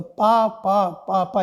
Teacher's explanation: ध्यान में रखिएगा क्योंकि उसके पास दांत नहीं होता है तो ओठों को चिपका करके ही बोलता है